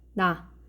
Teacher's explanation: 혀가 윗니 바로 뒷부분 여기 잇몸에 닿았다가 떨어지면서 소리 나는 것을 확인할 수가 있어요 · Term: 잇몸 소리